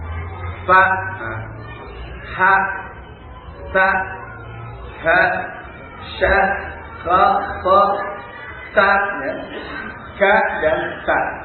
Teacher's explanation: Sifat hamd ini bersamaan keluarnya suara keluar nafas.